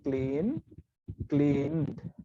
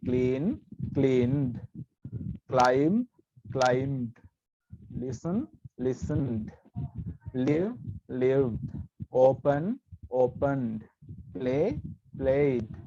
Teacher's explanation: මේ අගට එකතු වෙච්ච ed pronounce වෙන්නේ d විදිහට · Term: d sound